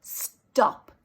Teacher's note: stop there's no puff for the t